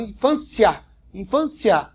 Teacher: tá vendo aqui uma paroxítona que a sílaba tônica é a penúltima